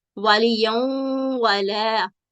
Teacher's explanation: اور یہ ادغام ناقص کی مثال ہے، وَلِيَوْمَ وَلَا، یعنی تنوین فتح تین کے بعد واو مشدد ہے، اس میں چونکہ یہ ادغام ناقص ہے اس لیے اس میں غنہ کی آواز آئے گی، اور پچھلا متحرک حرف جب تشدید کے ساتھ مشدد حرف کے ساتھ ملے گا تو غنہ کی آواز کے ساتھ ملے گا۔